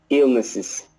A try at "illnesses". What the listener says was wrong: That's better, yeah.